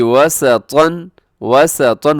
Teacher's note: वाव पे होंठ गोल होते हैं, सीन में सीटी होती है